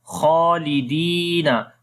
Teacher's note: Jahannama khalidina, kha we long due to standing fatha on it. Di we long due to yamadda.